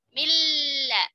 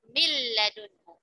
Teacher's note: Tidak ada lagi terdengar huruf nun-nya. Dan yang kedua, hilang juga sifatnya. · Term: idgham kamil